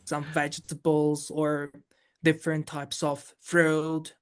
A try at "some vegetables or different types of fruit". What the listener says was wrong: some words are a little bit over pronounced now we know in English we have strong forms and weak forms we have sentence stress some words stand out more than others